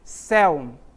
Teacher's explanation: a palavra céu observa em que ela termina por um ditongo aberto Olha só o El certo então deve receber acento também céu